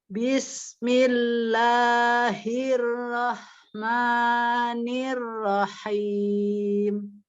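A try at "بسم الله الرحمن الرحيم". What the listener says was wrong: Nirnya jangan niro, nah dia tipis ya. Jangan nir. Nah kalau nir itu kan ditebalkan, ya itu ayunan aja, jadi ayunan suara kita ya. Tapi bukan berarti kita baca lambat ya.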